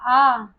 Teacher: तो हमारा पश्च स्वर है बड़ा आ